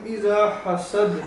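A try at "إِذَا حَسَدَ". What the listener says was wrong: اذا حسد نہیں زال پڑھیں گے اذا حسد.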